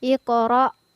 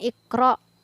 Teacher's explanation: ada huruf qaf yang bersukun di tengah ayat maka cara penyebutannya adalah dengan dipantulkan ikoro Jadi bukan Iqro ya dan di ujung ayatnya adalah faskho